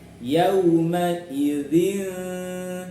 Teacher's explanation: Harus dengung sekaligus ikhfa, dengung samar ya.